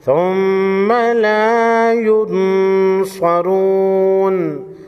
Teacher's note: ثم، میم اور نون مشدد ہمیشہ غنہ ہوتے ہیں، یہاں پر میم مشدد ہے، میم مشدد کو غنہ کر کے پڑھیں گے۔